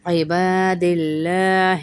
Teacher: عین زیر عی ہے، یہ حمزہ نہیں ہے